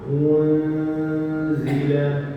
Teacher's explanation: Kaedahnya adalah hujung itu satu haknya, yakni dhammah. Kemudian ketika berlaku dengung, didatarkan bentuk mulut, lidah menghampiri makhraj zain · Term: ikhfa hakiki